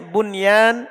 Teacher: Antum perhatikan nun sukun setelahnya ada ya ndak dibaca idgham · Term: izhar